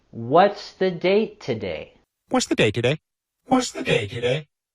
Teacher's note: we want to have our intonation falling at the end as it's a WH question